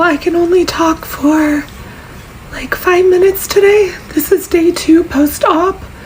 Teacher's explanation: it's obviously very airy and breathy and horse but I'm really happy with the pitch it's like